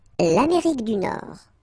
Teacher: Final D not pronounced.